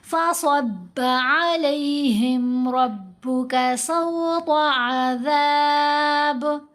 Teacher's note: فصب صاد کو موٹا پڑھیں گے، با کو باریک.